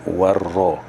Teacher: Ra bila berbaris di atas dia tebal, mufakhamah, tebal.